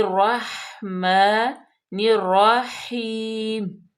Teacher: میم پہ فتح اشبائی ہے، کھڑی زبر ہے، اس کو ہم لمبا کریں گے الف مدہ کے برابر